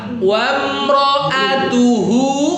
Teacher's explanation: Wa mra'atuhu, hu-nya pakai tenggorokan bagian bawah.